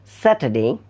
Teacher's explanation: আর সাউন্ডটাকে একটু কম উচ্চারণ করছে